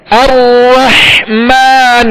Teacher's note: نون پر پیش ہے لہذا اس کو کھینچیں گے نہیں، بغیر کھینچے بغیر جھٹکا دیے معروف طریقے سے پڑھیں گے، ہونٹوں کو گول کر کے